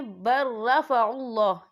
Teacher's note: یہ اللہ کا نام پر پڑھا جائے گا کیونکہ اللہ کے نام سے پہلے پیش ہے